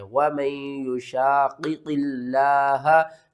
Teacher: 2 قاف ہیں اور دونوں ہی موٹے کر کے آپ نے پڑھنے ہیں۔ وَمَن يُشَاقِقِ اللَّهَ، لفظ اللہ کو آپ نے یہاں باریک پڑھنا ہے، لفظ اللہ سے پہلے زیر ہے، یہاں لفظ اللہ سے پہلے پیش ہے، ہم نے لفظ اللہ کو موٹا کر کے پڑھنا ہے۔